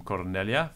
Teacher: and then the ablative so um from cornelia i'm exaggerating this this ablative ending it's a long vowel and it's not stressed